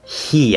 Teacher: i say he we don't say e right we say he i'm already in the e position when i start that that voiceless sound so it's like a voiceless e plus the voice e he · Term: voiceless vowel consonant